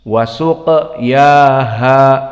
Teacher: qaf tadi makhrajnya adalah aqsal lisan ma'al hanak al-a'la dan sifatnya jahr